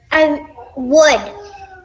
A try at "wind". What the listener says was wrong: Well, wood doesn't have the nd at the end, does it? It sounds more like d, right?